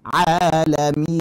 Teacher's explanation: Jadi huruf mat keluarkan dari al-jawf.